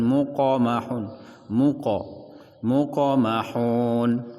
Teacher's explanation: Qa qalqalah kecil, huruf yang tebal tetap ditebalkan, muqamahun, muqamahun, jangan ditahan, jangan dibaca muqamahun, tetapi langsung disambungkan, dimasukkan ke huruf mim setelahnya, muqamah.